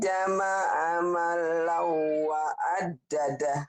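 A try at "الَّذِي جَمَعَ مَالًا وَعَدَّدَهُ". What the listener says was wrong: bagus, tinggal maknya nih kurang panjang Bu. Alladzi jama'a malan wa 'addadah.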